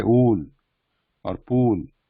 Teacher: Ool, like in the when we say ool or pool, longer version. So the difference between this oo, short version oo, and the long version oo is the duration.